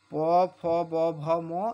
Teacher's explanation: আর প ফ ব ভ ম এগুলো ওষ্ঠবর্ণ, কারণ প্রত্যেকটা আমরা ঠোঁটে ঠোঁট না টাচ করে এই 5টা বর্ণ উচ্চারণ করতে পারবো না, তাই এই বর্ণগুলোকে বলা হচ্ছে ওষ্ঠবর্ণ।